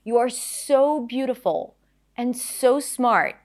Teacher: stress the word so to emphasize what it is that she's saying